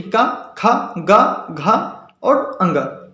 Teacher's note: का वर्ग के जितने भी अक्षर होते हैं उसके अलावा आ और हा ये सभी कंठ के द्वारा बोले जाते हैं।